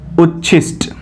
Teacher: आगे बढ़ते हैं, जब त के बाद श हो तो त का च और श का छ हो जाता है, यानी कि अगर त के बाद बड़ा श आता है तो जो त है वो आधा च और जो स है वो छ में परिवर्तित हो जाता है